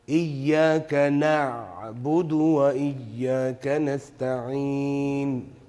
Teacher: So don't do excessive hams on the kaf and the ta. Don't do and glottal stop on the ayn.